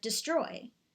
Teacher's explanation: An iamb or iambic foot consists of an unstressed syllable followed by a stressed syllable, such as in the word destroy. The first syllable, D, is marked unstressed by an X, and the second syllable, stroy, is marked stressed by a forward slash.